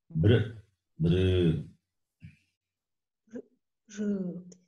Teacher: The U sound should not come. The lips are not rounded.